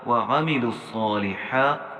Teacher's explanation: لام صاد پیش لس، یہاں لام کو صاد کے ساتھ ملائیں گے تو لہٰذا بیچ میں جو 4 لفظ خالی ہیں ہم نے انہیں چھوڑ دینا ہے۔ صاد کو ہم نے موٹا پڑھنا ہے، اور صاد کے اوپر جو کھڑا زبر ہے اسے 1 الف کی مقدار ہم نے لمبا پڑھنا ہے